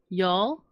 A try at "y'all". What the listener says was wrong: It sounds like It sounds like you're saying yowl, but y'all.